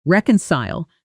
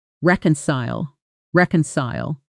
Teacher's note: Listen for the stress. Reconcile, strong on the first syllable, softer through the rest.